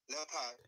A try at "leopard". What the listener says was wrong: Okay, the correct pronunciation of the word is leopard. So the E-O there is just nothing. It does not sound leo and pad. It's le and put.